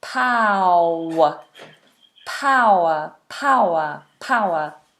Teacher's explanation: Now I've left the W here in black because when you have this word, then the diphthong ow is continued on into a W sound, a harder W sound